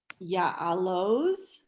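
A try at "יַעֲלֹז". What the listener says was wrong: It is very good.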